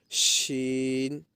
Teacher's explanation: بڑی شین کے اندر تھوڑی سی سیٹی بجے گی